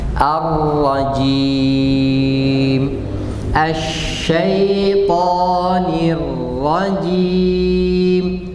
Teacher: Huruf jim kasrah. Jim, jangan cim seperti shin.